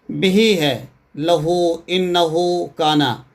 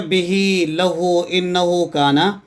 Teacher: ان مثالوں میں ہا کی حرکت کو اگلے حرف سے ملانے کے لیے ایک مختصر مد پیدا کی گئی ہے۔ حروف مدہ الف، واو ساکن یا ساکن اپنی اصلی ذات میں حروف مد ہیں، جبکہ مد صلہ میں مد کسی مستقل حرف مد کی وجہ سے نہیں، بلکہ ہا ضمیر کو ما بعد کے حرف سے ملانے کی وجہ سے پیدا ہوتی ہے۔